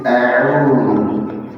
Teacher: Jadi fathah itu a'udzu, bukan a, ya, karena kalian ini hamzah syiddah tapi bukan mufakhamah, dia akan tebal. Kalau baca a'udzu jadi tebal, tetap tipis a'udzu, ya. Jadi bedakan hamzah dengan ain, jangan membaca a'udzu jadi hamzah semua.